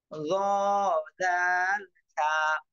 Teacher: জিহ্বার আগা সামনের উপরের 2 দাঁতের আগার সঙ্গে লাগাইয়া